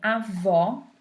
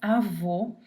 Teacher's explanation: Depois, o acento circunflexo, avô, que na língua portuguesa só vai aparecer sobre as letras E O, tá? O acento agudo, ele vai me fazer um som aberto, O, e o acento circunflexo faz um som fechado